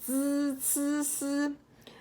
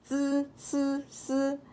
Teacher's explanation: You have to control the flow of it. So the z, you have to block the flow. The c, you have to halfway block the flow. And then the s, you let it go through. That's how you control the sound.